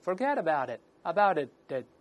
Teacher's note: 这两个▁t▁都浊化成的，最后那个▁t▁失去爆破